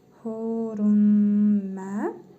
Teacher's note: İdğam-ı mə'l-qunnə qaydasına görə mim hərfini şəddəli tələffüz edirik. Tənvindəki nun hərfini isə burnumuzda tələffüz edərək bir əlif miqdarı uzadırıq.